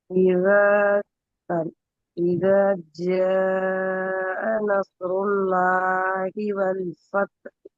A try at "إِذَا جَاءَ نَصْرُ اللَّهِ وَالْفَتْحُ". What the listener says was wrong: நஸ்ருல்லாஹி என்கிறத குறைங்க. சரியா? இதங்கிறதையும் கொஞ்சம் குறைக்கலாம். ஜீம அதே அமைப்புக்கு நீட்டினீங்க என்றால் இந்த ரெண்டு இடத்துலையும் குறைபட்டுறது பாருங்க. ரெண்டு இடத்துலையும் லைட் குறைபட்டுறது. உங்களுக்கு கடைசி வரைக்கும் அதே டோனை ஃபாலோ பண்றதுக்கு ஈஸி ஆயிக்கும். إذا جاء نصر الله والفتح. الله போதும். இத போதும்.